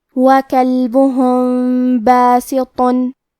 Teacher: کلمت باسطن میں با حروف الاخفاء الشفوی میں سے ہے اور اخفاء کا معنی ہے چھپا دینا، تو ہم میم ساکن کو چھپاتے ہوئے اور غنہ کے ساتھ یہ حکم کو ادا کریں گے